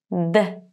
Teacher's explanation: you touch the alveolar ridge behind your teeth with the tip of your tongue